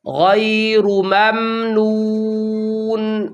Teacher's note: نون کے پیش کی آواز ناک میں نہ جائے